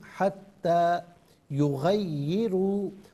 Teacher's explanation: را پر پیش را کو پر کر کے پڑھا جائے گا